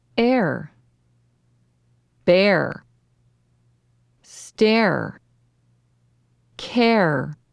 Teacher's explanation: make the long a sound and then add an r as you drop your voice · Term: long a followed by R